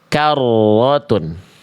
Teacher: Bergetar tidak berlebihan. Jadi ketika ro bertasydid bergetar.